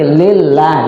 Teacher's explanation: huruf lafzul Allah ketemu dengan huruf yang sebelumnya berbaris kasroh, berarti dibaca tipis